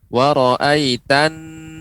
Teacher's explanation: Nun yang bertasydid itu harus dengan menggunakan di Pangkal hidung dan lebih ditekan